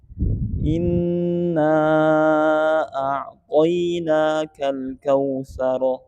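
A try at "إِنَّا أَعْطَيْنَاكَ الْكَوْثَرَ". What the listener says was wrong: Asik. Mantap. Lanjut.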